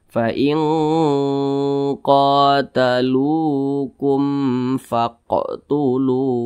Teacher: Nah, maka dia dibaca panjang karena dia memiliki tanda baca dhammah dan posisinya tepat berada di belakang huruf waw sukun. Nah, lu dibaca panjang, mad tabi'i panjangnya 2 harakat atau kira-kira 2 ketukan. Fa in qatalukum faqtuluhum.